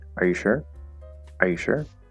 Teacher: for a yes or no question there's this rising at the end